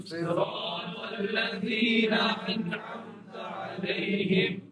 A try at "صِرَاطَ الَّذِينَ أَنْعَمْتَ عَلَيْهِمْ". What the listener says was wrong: علیہم. اچھا یہاں پر ہا آیا ہے، اس لیے یہاں پر بولنا ضروری ہے.